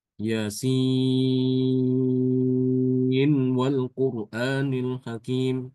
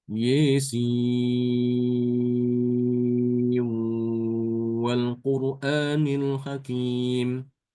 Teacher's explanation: nunnya itu dibaca dengan jelas untuk bacaan Imam Hafz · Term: izhar